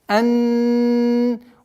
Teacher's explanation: Удержание, назализация в размере 2 огласовок, так как она назализованный звук, нун, удержание.